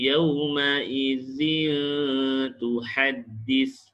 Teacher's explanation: menyebut nun sakinah atau tanwin dengan cara bacaan antara izhar iaitu terang dan nyata, dan dengan idgham iaitu dengan dengung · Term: ikhfa hakiki